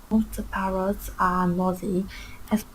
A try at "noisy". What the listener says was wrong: It's not nosy, it's noisy.